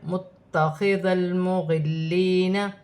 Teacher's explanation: تا مشدد ہے، جماؤ کے ساتھ ادا کیا جائے گا